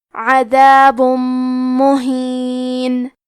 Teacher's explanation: میم حروف الادغام بغنہ میں سے ہے، ادغام کا معنی ہے حرف کو حرف میں داخل کرنا، تو ہم تنوین کو میم میں ملا کے غنہ اور تشدید کے ساتھ یہ حکم کو ادا کریں گے